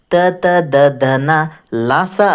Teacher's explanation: ಹಲ್ಲಿನ ಸಹಾಯದಿಂದ ಹುಟ್ಟುವಂಥ ಅಕ್ಷರಗಳಿಗೆ ದಂತಾಕ್ಷರಗಳು ಅಂತ ಹೇಳ್ತೀವಿ